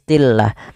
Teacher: di sini lamnya dibaca dengan tipis